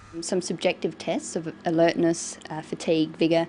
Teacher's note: we put commas where she uses pauses and we use intonation to separate the items in a list